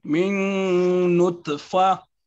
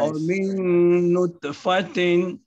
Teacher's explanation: you did the idgham and you also mark your qalqala for ta.